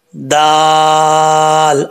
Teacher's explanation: दाल का मखरज है जुबान की नोक ऊपर वाले दांतों की जड़ों से लगे तो दाल पढ़ा जाता है